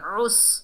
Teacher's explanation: आइन को हलक के दरमियान से अदा करेंगे और आइन को सीन से मिलाएंगे। उस, खड़े ज़बर को एक अलिफ की मिकदार खींच कर पढ़ेंगे।